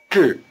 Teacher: The tongue is curled back for the J sound and stays curled back through the long R sound.